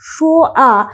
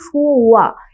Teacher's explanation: দুটি স্বরধ্বনি যখন পাশাপাশি থাকে তখন উচ্চারণের সুবিধার জন্য ব-শ্রুতি ঘটে থাকে।